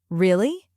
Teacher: For example, if I say really with a rising tone, it sounds like I'm asking a question.